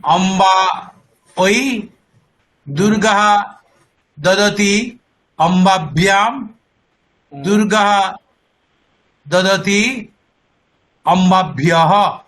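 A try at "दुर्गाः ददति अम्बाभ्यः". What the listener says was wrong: খুব ভালো, খুব ভালো হয়েছে।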